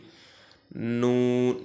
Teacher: নুনের নুনটা উচ্চারণ করতে হবে জিহ্বার আগা অর্থাৎ জিহ্বার একদম মাথাটা তার বরাবর উপরের তালুর সঙ্গে লাগিয়ে আমরা খেয়াল করি জিহ্বার সামনটা মাথাটা উপরের তালুর সঙ্গে লাগিয়ে নুনকে উচ্চারিত উচ্চারণ করতে হবে এবং নুন উচ্চারণ করব আমরা চার থেকে ছয় আলিফ পরিমাণ টেনে